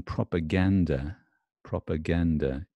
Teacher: the UH in propaganda propaganda is unstressed